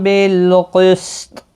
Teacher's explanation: وقف کی صورت میں تا ساکن پڑھا جائے گا، اس پر قلقلہ بھی ہوگا